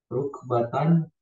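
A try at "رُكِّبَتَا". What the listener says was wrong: Bukan rukbatan. Rukibata, jadi baca majrurnya.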